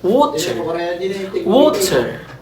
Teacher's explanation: Flap R, as in American English, water